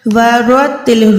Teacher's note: را جو ہے موٹی ہے، یہ تا باریک ہے، تو نہیں ہے، ورتل نہیں کر سکتے، یہاں پر ورتل، را کے ٹائم منہ کو گولا ہی کریں، تا کے ٹائم باریک رکھیں۔